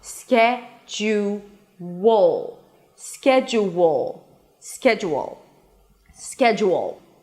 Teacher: we have an intrusive sound because it's an ooh sound that shifts to another vowel and then we add a w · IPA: ˈskɛdʒuwəl